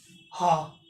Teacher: और ये क्या हो जाता है, स्वर यंत्रीय हो जाता है, ये कंठ में छिपा हुआ होता है, ठीक है, कंठ के भीतर स्थित रहता है · सघोष का महाप्राण होता है। बोल के देखिए, हा, तेज साउंड निकल रहा है, हा, ठीक है, हा नहीं हो रहा, हा, ठीक है, तेज साउंड निकल रहा है, तो क्या हो जाएगा, सघोष का महाप्राण, ठीक है।